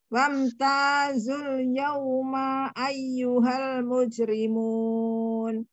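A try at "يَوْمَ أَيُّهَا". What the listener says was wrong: Nah, kayaknya ngelihat ke bawah jadi makanya kepanjangan yauma ayyuhal, maknya satu harokat aja.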